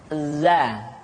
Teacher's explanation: Diucapkan dengan cara ujung lidah kita berada di antara dua gigi seri bagian atas dan bagian bawah. Za. Menyerupai dengan pengucapan huruf Z di dalam huruf Latin. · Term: huruf za